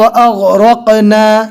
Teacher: गौइन रो क़फ तीनों को पूर पढ़ेंगे